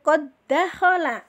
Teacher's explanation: Maka dal yang pertama kita leburkan, kita tidak anggap ya, dari huruf ko masuk ke dal yang berikutnya, yaitu qad dakhala gitu ya, seolah-olah di dalnya 1 padahal mah secara tulisan dalnya 2. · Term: idgham mutamasilain